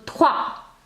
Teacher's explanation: And the S at the end will not be pronounced.